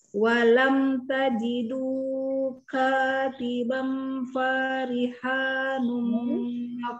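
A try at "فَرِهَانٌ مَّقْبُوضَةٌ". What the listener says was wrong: Fanya pendek. fanya pendek.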